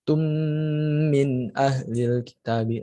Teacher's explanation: ada mim sukun mim tasdid sebenarnya termasuk dalam gunnah juga. Jadi bacanya tetap ditahan.